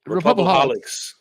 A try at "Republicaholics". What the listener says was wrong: No IC. Get rid of that. Republicaholics.